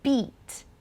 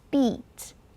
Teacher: Like the name of the letter E. Nice and long and high.